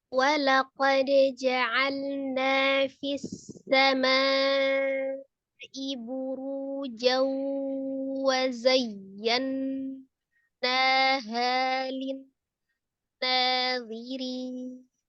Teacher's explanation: Walaqad di situ ada dal sukun ya qalqalah karena dia posisinya di tengah atau di wasal, jatuhnya qalqalahnya qalqalah sughra ya, qalqalah kecil. Walaqad ja'alna, di situ na ada mad qabi alif, ada alif sebelumnya fathah ya, na dibaca 2 harakat.